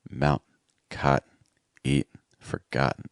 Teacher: I want that N sound to be very weak and fast like an really low in pitch, really weak, really light. So, it's not mountain, it's mountain. · It's almost like you're whispering that N sound in many cases. It doesn't have to be very strong.